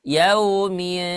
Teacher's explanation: Ujung lidah bertemu dengan pangkal gigi seri atas. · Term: makhraj huruf dzal